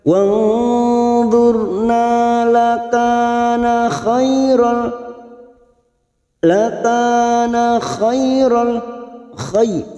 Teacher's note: fathah bertemu ya sukun huruf lain kita lunakkan. Khairal lahum fathah tanwin bertemu lam namanya bacaan idgham bila guna, hanya masuk tanpa mendengung, tanpa ditahan lama-lama, hanya masuk.